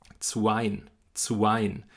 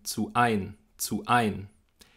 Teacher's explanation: wenn wir eine betonte Silbe haben, die mit einem Vokal beginnt, dann sprechen wir im Deutschen ein Glottesschlag oder Knacklaut davor. Das ist dieser sogenannte Vokalneueinsatz auch. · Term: Glottisschlag oder Knacklaut